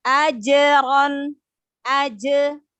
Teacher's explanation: Maka qalqalah sukun di tengah kata atau kalimat namanya qalqalah sugro. Ya, dipantulkan dengan lembut.